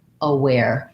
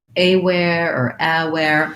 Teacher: because it has second syllable stress, the letter A is a schwa. So it should sound like aware.